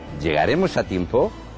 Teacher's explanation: no interrogativo este tonema sobe cara arriba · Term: tonema final